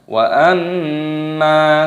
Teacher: mimnya berharokat tasydid, ini dibaca gunnah ataupun berdengung. Cara membacanya yaitu dengan cara didengungkan.